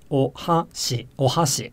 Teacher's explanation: But the ha, it's not longer than the surrounding bits, and it's not usually significantly louder than the other bits. Again, it's the difference in pitch that determines the accent. · So, for example, the word for chopsticks in Japanese is ohashi, ohashi, with the ha being a little bit higher than the surrounding bits. But the ha, it's not longer than the surrounding bits, and it's not usually significantly louder than the other bits. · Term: pitch accent